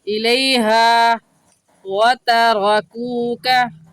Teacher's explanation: ہا الف ہا کو 1 الف کی مقدار کھینچ کر پڑھیں گے